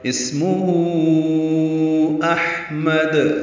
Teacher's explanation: ادا کریں گے، اور میم کو دال سے ملا دیں گے، وقفاً دال ساکن پہ قلقلہ ہوگا